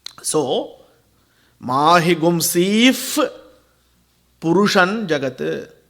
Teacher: Visargam followed by Pa, sound will be if